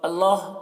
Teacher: اللہ کلام کو پر پڑھیں گے کیونکہ اللہ کلام سے پہلے زبر ہے